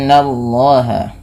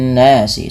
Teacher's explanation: Nun berharakat tasydid dinamakan dengan bacaan gunnah. Tahan dulu bunyi suara n ya sepanjang 2 harakat